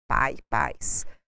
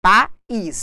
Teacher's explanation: A segunda vogal do hiato ela é tônica